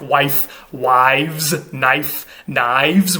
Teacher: you actually voice the F to a V when you put something after it. That's a relic of the Old English period, where F and V were basically just versions of the same sound.